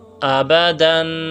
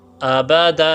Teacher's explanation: تو پھر بچوں کو کہیں کہ ان کو ملا کر پڑھیں دوبارہ سے: حمزہ زبر آ، با زبر با، آبا، دال 2 زبر دن، آبادن، وقفاً آبادا۔ ٹھیک ہے، زبر کی تنوین میں جو الف آ جاتا ہے وہ وقف کی حالت میں ظاہر ہو جاتا ہے